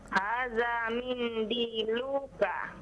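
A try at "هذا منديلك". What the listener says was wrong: Nah, lu-nya jangan dipanjangkan ya.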